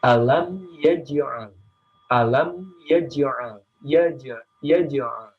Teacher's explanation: ciri-cirinya qalqalah sugro itu pantulannya kecil dan dia berada di tengah ayat